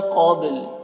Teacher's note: क़ब्लु क़ाफ को पुर पढ़ना है, उर्फ़ मुस्तालिया में से है, बा में कलकला होगा, ठीक है।